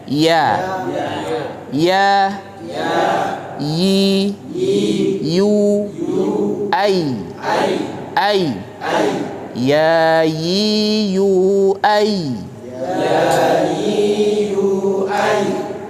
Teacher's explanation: Iya itu keluar dari lidah bagian tengah. Kalau tadi kita bermain lidah bagian pangkal, ya, sekarang kita naik sedikit, kita berada pada lidah bagian tengah. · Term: huruf iya